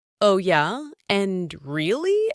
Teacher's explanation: Notice the intonation rises on these. That rising intonation shows interest and encourages the other person to continue. If you say, oh yeah, with a falling tone, it sounds like you're ending the conversation.